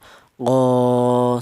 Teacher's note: Kalau tidak ada alifnya ini huruf qof ini berharakat fathah ini dibaca pendek yaitu satu harakat cukup seperti itu. Berhubung ada alifnya, maka dipanjangkan dua ketukan. Qo seperti itu ya. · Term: mad thobi'i